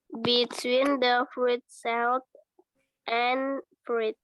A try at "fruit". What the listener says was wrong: Fruit, bacanya. I-nya nggak bunyi.